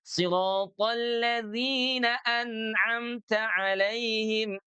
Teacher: pengucapan huruf dzal selain makhrajnya di ujung lidah dengan gigi seri atas, juga sifat hurufnya harus dijaga.